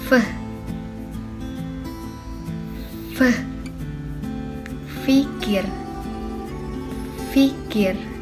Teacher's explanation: Selanjutnya yaitu konsonan labiodental. Konsonan ini dihasilkan dengan menggunakan bibir bagian bawah dan gigi bagian atas. Bunyi yang dihasilkan yaitu f, fikir, fikir.